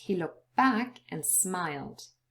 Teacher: and in fact with the end the two things happening um we've lost the da but the e has also changed into a schwa that is vowel reduction · the t as well as the d are both lost, and there is elision here.